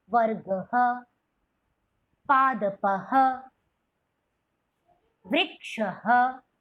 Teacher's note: जो ध्वनि है विसर्ग की कुछ ह से मिलती जुलती है, जो कंठ से ही उसका उच्चारण होगा, कंठ्य ही है, विसर्ग ही, ठीक है।